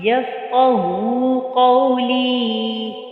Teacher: قاف کو پر پڑا اور ہا کو اقصی حلق سے ادا کیا